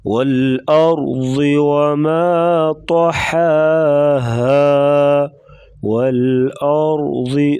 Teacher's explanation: را کو موٹا کریں گے، را ساکن اس سے پہلے زبر، تو را کو پر پڑھا جائے گا موٹا، اور ضاد موٹے حروف سے ہے، اس کو موٹا پڑھیں گے۔